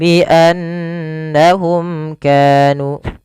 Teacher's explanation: lafal nun berharakat tasydid kita baca dengan bacaan gunnah, memasukkan suara nunnya ke rongga hidung kita dan ditahan. Kesalahannya yang tidak menahan.